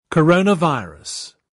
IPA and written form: kəˈrəʊ.nəˌvaɪə.rəs (Coronavirus)